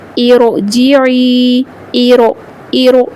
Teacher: را کو پر پڑھیں گے کیونکہ یہ جو زیر ہے عارضی زیر ہے